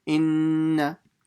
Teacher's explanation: I do the ghunna, and after the ghunna is done, I just pronounce the fatha and I don't stretch it. Inna. then the ha will be stretched with the alif and the fatha.